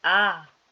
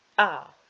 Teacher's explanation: The high tone, the rising tone, will be ah, and the low falling tone would be ah